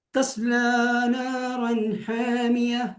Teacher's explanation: നാറൻ തൻവീൻ ശേഷം ഹൽക്കിന്റെ അക്ഷരമായ ഹ വന്നു, അവിടെ വെളിവാക്കി